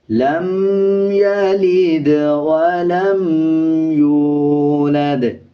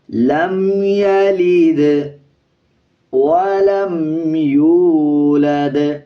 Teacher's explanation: لام کے بعد جو میم ہے اس کے اوپر غنہ نہیں کرنا